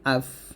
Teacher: নিচের ঠোঁটের পেট সামনের উপরে দুই দাঁতের আগার সাথে লাগিয়ে উচ্চারিত হয় ফা